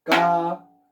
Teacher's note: La sílaba tónica de caracol es la última.